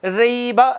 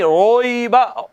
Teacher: यूँ नहीं पढ़ेंगे रईबा, रईबा नहीं, रोईबा, होंठ गोल करें, हर्फ मोटा हो जाएगा